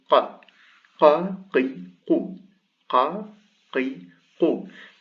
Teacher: It's like a K, but it's very backwards in the throat. It goes qa, qi, qu, qa, qi, qu. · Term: qaf